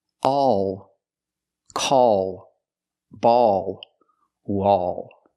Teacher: The vowel sound is a plus a dark L.